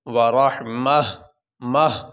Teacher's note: اس آیت تا پہ اگر وقف کیا جاتا ہے یہ گول تا پہ، تو اس تا کو وقف کرتے ہوئے تا نہیں پڑھا جائے گا، وقف کی صورت میں اس تا کو ہا بنا کے پڑھا جائے گا